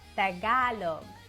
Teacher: it's important to note that the stress is on the second syllable.